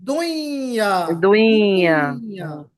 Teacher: نون کی آواز کو ہم مرج کریں گے نا یا میں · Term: ادغام